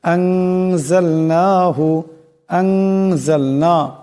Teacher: এখানে নুনের উপর মদ আছে এই নুন কে লম্বা করে পড়তে হবে